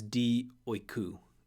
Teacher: Dia plus oikos, through the house, through a house, it becomes di oiku. The alpha of dia drops, it elides and disappears into the next noun.